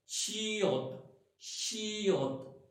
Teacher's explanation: शियत की आवाज निकालने के लिए आपके दोनों दांतों का, ऊपर और नीचे वाले दांतों का इकट्ठा होना जरूरी है। सो आपकी जो जबान है वो आपके दांतों के पीछे होगी, यानी कि आपके जो मसूड़े हैं उनको टच कर रही होगी, और इस तरह से शियत शियत।